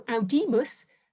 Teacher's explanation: that i is distinctively long in classical latin because it's long it makes the syllable long and since that's a penultimate syllable it gets the accent